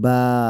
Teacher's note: বা হরফটি 3 আলিফ টানিয়ে পড়তে হবে।